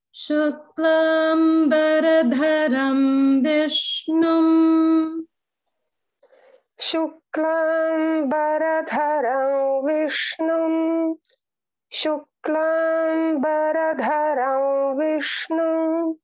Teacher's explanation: you're pronouncing the dha mahaprana in dharam